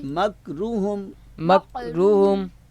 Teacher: یہاں پہ چھوٹا کاف ہے، یہاں بھی خیال کرنا ہے کہ چھوٹے کاف کو بھی ہم آپ بڑے کاف سے نہ پڑھ دیں